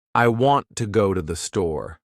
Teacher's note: The words want, go, and store are stressed. The other words I, to, and the are much faster and softer. That's the natural rhythm of English.